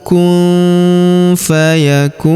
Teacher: Maka nun sukunnya melebur ke huruf fa. Kita baca dengung dan samar. Dengungnya kita tahan dua sampai harakat.